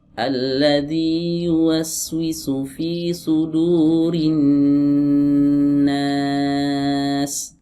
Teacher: sabar dulu, nunnya alirkan dulu, baru baca fathah setelah mengalir ya nunnya. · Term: huruf nun